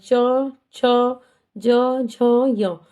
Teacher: हमारी जीभ उल्टी होकर तालु को स्पर्श करती है। हमारे मुख के ऊपर के भाग को तो उसे तालव्य तालु कहा जाता है। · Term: तालव्य वर्ण